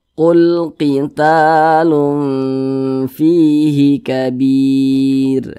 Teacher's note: kalau ada huruf ra sukun sebelumnya ada huruf ya sukun nih, nah maka huruf ra-nya itu dibaca tipis